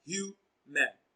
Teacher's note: Human is stressed on its first syllable as human.